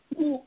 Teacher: ஊ ஆகிய எழுத்துக்கள்லாம் இதழ் குவிவு என்ற முயற்சியினால் தோன்றும் என்று சொன்னார். ஊ என்று சொல்லுகிற போது இதழ் நன்றாக குவிந்து கொள்ளும். ஊ என்று சொல்லுகிற போது இதழ் குவியும்.